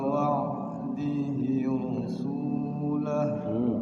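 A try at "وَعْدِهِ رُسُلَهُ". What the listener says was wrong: Sunya pendek. Wa'dihi rusulah. Langsung.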